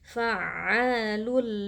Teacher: tanwin yang bertemu dengan huruf lam hukumnya adalah idgham bila ghunah tanwinnya dimasukkan atau dileburkan ke dalam lam sehingga lam menjadi bertasdid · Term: idgham bila gunnah